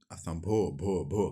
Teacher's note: भो होठ सट रहा है। होठ होठ से।